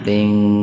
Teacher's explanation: kasratain ketemu ta secara terpisah, jadi dibaca samar, betul-betul dibaca samar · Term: ihfa hakiki